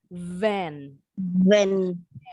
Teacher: Kalau yang ini pita suaranya harus bergetar huruf V-nya.